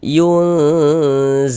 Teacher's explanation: di bagian yunnya itu suaranya itu kita tahan, kita panjangkan sejenak sepanjang 2 harokat. Yunzifun. Fun dibaca panjang.